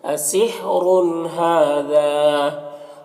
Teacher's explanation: हा और दाल दोनों में खड़ा ज़बर है और एक में अलिफ मद्दा है तो दोनों को एक अलिफ के बराबर खींचेंगे।